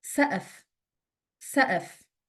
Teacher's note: The qaf is pronounced as a glottal stop.